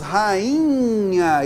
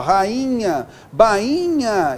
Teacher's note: esse I aqui é nasal